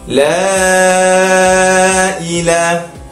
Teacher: Mat jaiz munfasil. Huruf mat bertemu dengan hamzah dalam dua kalimah. Jadi cara membacanya ialah memanjangkan dengan kadar 4 ataupun 5 harakat.